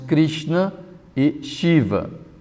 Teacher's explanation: Isso se pronuncia mais ou menos Shad, como também nos nomes Krishna e Shiva. Esse S se diz que é retroflexo.